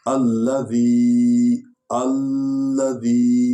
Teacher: ذال کو جو ہے ڈھیلا پڑھیں گے، نرم پڑھیں گے، زے نہ بننے دیں. زے جو ہے زور دیں گے تو زے بن جائے.